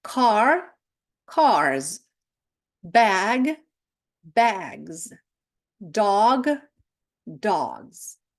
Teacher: пишемо с але ж насправді чуємо з після голосних після дзвінких приголосних